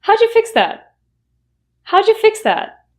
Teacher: How did you will reduce to how'ja.